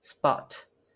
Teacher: when the P sound follows a S sound, as in spot, this P sound is not released. It has a sound quality similar to bird sound, but still is a P sound, but it just does not have the released property. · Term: unreleased P sound